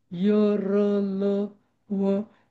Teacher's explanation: अंतस्थ वर्ण आहे य र ल व जीभ टेकत नाही बघा कुठे